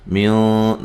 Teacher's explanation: نون ساکن کا اخفا ہے، موٹا غنہ کریں گے